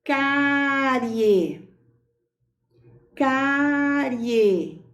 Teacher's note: É crescente, porque nós temos uma semivogal mais uma vogal.